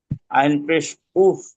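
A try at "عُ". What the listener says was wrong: উফ না উফ না উফ না যে ভাই বলবেন আইন পেশ উ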